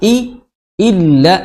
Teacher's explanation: hamzah i di tenggorokan paling dalam, ya, di kedua pita suara